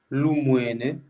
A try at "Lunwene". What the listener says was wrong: Lunwene, c'est N, hein, Lunwene.